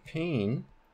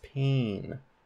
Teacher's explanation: whatever vowel we have adds the property of nasalization before nasal consonants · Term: nasalized